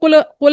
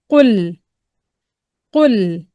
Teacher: لام کے مخرج میں آواز جا کے رک گئی